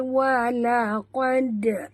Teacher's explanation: Dan lantunkan pada dal. Okey, lantun pada dal qalqalah